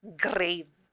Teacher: is when blended together they will have the initial consonant blend the two consonants are blended together but you can still hear the individual sounds of g and r